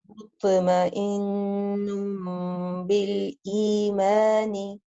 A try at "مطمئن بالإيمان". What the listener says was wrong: You did apply qalqala. Just try to make it a little bit stronger. مطمئن بالإيمان.